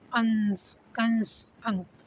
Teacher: अनुस्वार जो होता है इसमें हवा नाक से ज्यादा निकलती है और मुंह से कम